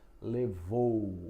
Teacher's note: O som de o é forte, o U som fraco. Então vai da da vogal para semivogal. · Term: decrescente, Decrescente